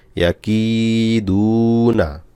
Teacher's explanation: ইয়া জবর ইয়া, কাফ ইয়াজের কি, ইয়া কি, দালওয়া পেশ দু, ইয়া কি দু, নুন জবর না, ইয়া কি দু না, কাফে এক আলিফ টান, জেরের পর জজমালা ইয়া, দালে পেশের পর জজমালা ওয়াও, মাদের হরফ, এক আলিফ করে টান হবে